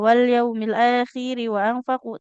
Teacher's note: wawunya jangan ditekan Ibu, nggak ada tasydidnya ya